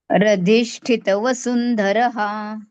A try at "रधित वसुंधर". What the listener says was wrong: बरोबर